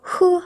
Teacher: 하보다 더 깊숙히 목구멍 깊숙히 해서 흐 하고 소리내는 발음까지 만들어졌죠